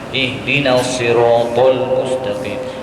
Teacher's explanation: Memang huruf ta itu tebal, tetapi bukan maknanya kita kasih bulat.